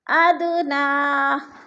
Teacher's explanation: دا ساکن ہے اور حروف قلقلہ میں سے ہے تو اس کو ہم نے ہلا کر پڑھنا ہے